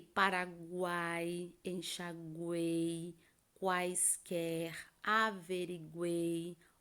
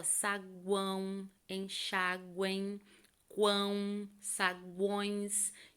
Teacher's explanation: Então, olha como o som sai nasalizado, tá? Então, tritongo oral, o ar passa livre pela boca. Tritongo nasal, o som sai pelo nariz